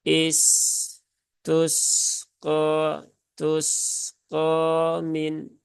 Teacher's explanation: Sin ada sifat rakhawah maka tunaikan saja rakhawahnya alirkan hurufnya dengan sempurna maka Insyaallah akan terhindar dari munculnya sifat Qalqalah kemudian q ya